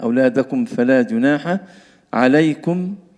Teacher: كما سبق قلنا عندنا أولادكم فيها كاف ضمير ندفع على الدال، أولادكم وعدم الغنة في الميم مع الفاء